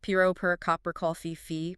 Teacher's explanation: the powerful hammer of the strong stress, followed by the lazy, effortless exhalation of the schwa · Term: alternating rhythm